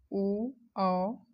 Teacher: कंठ ओष्ठी स्वर देख लेते हैं ओ औ। कंठ और ओष्ठ के द्वारा इसका उच्चारण होता है। वो जो है अ प्लस उ के द्वारा बनता है।